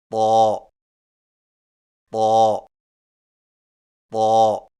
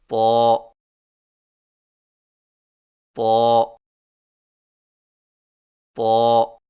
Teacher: طا کی ادائیگی میں زبان کی نوک کو سامنے والے اوپر کے دو دانتوں کی جڑ سے لگا کر اور زبان کے پچھلے حصے کو تالو کی طرف بلند کرتے ہوئے موٹی آواز میں پڑھیں، یعنی طا طا طا۔